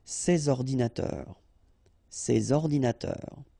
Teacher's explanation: All right, and of course les adjectifs démonstratifs, sorry, this or these, okay, and in that case I took the plural form, so these here, and then ordinateur, computers, so you should make the liaison between S and O